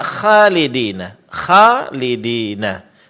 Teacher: Kesalahan yang terjadi adalah di sebagian daerah huruf kha dibaca tipis tidak ditebalkan